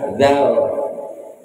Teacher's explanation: Makhrajnya huruf dal tuh di ujung lidah dengan hentakan sentuhan ke ujung gigi atas.